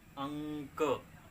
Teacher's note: अनुस्वार वाले अक्षर को जब भी बोलेंगे तो नाक से हमें अधिक सांस लेना पड़ता है। मुंह से कम रहेगा लेकिन नाक से अधिक सांस लेकर हम अक्षरों को जब बोलेंगे तो आपका अनुस्वार कहलाएगा, ठीक।